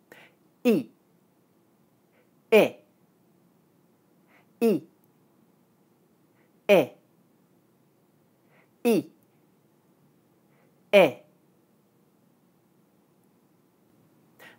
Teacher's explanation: For E, the back of the tongue is pulled back and up so that it's almost touching the roof of the mouth, while for I, the back of the tongue is in a slightly lower position with more space between the tongue and the roof of the mouth. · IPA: /ɪ/